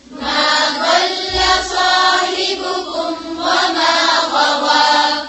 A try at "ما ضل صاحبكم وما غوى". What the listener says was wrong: फिर से पढ़ें, पेश को थोड़ा और होंठों को गोल करके अदा करें.